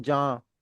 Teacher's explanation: अगर हम बोलते हैं जहां वो जहां में वो नेजल साउंड आती है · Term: नून गुना